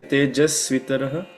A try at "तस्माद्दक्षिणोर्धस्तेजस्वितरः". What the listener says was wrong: Tejasvitaraha. Tejasvi. So you're saying Tejasvitaraha. You're not holding on the Svi. You have to hold a little bit on the Svi.